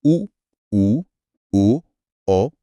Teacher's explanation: जब हम उ औ बोलते हैं तो जीभ पीछे की तरफ खींचती है जिसे पश्च स्वर कहा जाता है।